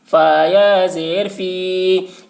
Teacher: یا ساکن سے پہلے زیر ہے، یا مدہ ہوا، اس لیے یا مدہ کو ایک الف کے برابر کھینچ کر پڑھیں گے